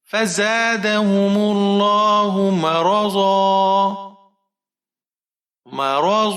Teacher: زا کو ہم سختی کے ساتھ پڑھیں گے، سیٹی والا حرف ہے